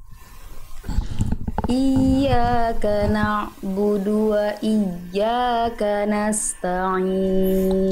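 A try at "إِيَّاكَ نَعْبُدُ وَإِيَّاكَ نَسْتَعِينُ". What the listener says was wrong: Tinggal di ain sukunya dialirkan lagi sedikit dan lebih santai, lebih ringan lagi.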